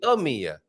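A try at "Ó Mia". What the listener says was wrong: Oh, it's more open. Oh, it's an open O. It's a different thing. So careful with that.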